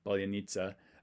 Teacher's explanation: this is the P at the beginning, the voiceless bilabial stop